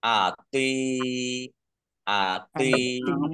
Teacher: Tok itu dibacanya agak berat ya, jangan seperti tak. Kalau tak ringan, tapi kalau tok agak berat.